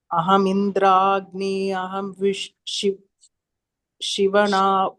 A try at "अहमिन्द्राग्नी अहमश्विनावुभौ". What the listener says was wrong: Ahamashvin. Ashvina vubhau, not Shiva. Ahamindragni ahamashvina vubhau.